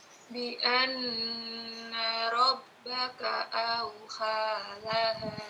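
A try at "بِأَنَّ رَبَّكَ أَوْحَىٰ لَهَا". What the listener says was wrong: Haknya bersih, jangan sampai jangan sampai sama dengan kha ya. Auha ha bi anna rabbaka auhalaha.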